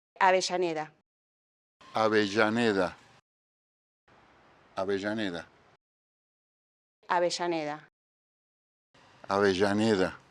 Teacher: Remember in Argentina, the double L is a sh sound.